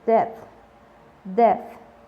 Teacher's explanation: Normalmente es como la TH tiene un sonido como de soplido con la lengua entre los dientes